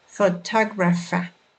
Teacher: notice that the stress falls on the second syllable